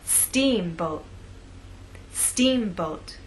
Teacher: making the first part of the word louder longer and at a higher pitch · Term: word stress